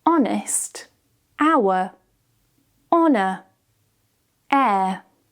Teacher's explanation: And lastly, silent H. When the H is at the beginning of a word, usually of French origin, we can remove the H.